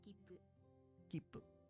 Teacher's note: you pause ever so slightly before pronouncing the next consonant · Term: double consonants